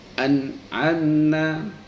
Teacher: Contoh salah satu ketika bertemu dengan ain, nun sukun bertemu dengan ain, an'amna, nah, contoh bacaan izhar itu pada tidak kita mendengung di dalam membunyikan nah, itu tidak boleh, harus jelas an'amna, ya, tidak boleh mendengung, namun harus izhar